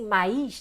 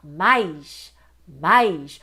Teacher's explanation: O I nem é nítido, então o I é semivogal.